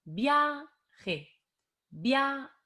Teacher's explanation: la a es la vocal que tiene la fuerza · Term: fuerza de voz